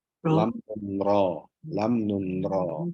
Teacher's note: ujung lidah bertemu dengan langit-langit